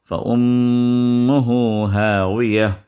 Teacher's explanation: هَاوِيَةٌ، فَأُمُّهُ یہاں پہ بھی دیکھیں میم کو شدہ آیا اور میم مشددہ ہے، تو ادغام مع الغنہ 2 حرکت تک یہاں پر آپ جو ہے غنہ کریں گے